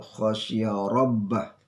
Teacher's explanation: Ro ini adalah ro tafkhim, dibaca dengan tebal.